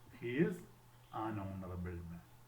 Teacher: that H remains silent and we listen to the next vowel sound